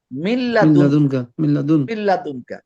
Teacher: নুন সাকিনের পরে লাম আসছে, এটা কি ইদগাম হবে, সংযোগ হবে, কিন্তু গুন্না হবে না।